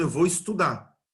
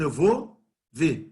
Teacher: os verbos no infinitivo em português na fala eles estão perdendo r